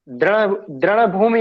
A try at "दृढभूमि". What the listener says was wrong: ये ना ढ है, ढ ढ ढ ढक्कन। यहाँ पे जो है ना ढ है, ये जो है ना ढ ढक्कन, ढ ढक्कन कैसे लिखते हैं?